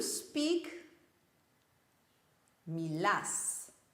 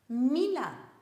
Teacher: the end syllable gets the stress